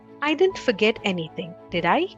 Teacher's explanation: The rising intonation on did I indicates that the speaker is not sure if he has forgotten anything or not.